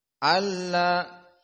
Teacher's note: Alla asalnya an dan la masuk kepadanya idgham, dan idgham nun kepada lam idgham bila gunnah sehingga tidak panjang